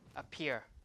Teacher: So in this case P appears in the stress syllable. So this P is aspirated. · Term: aspirated P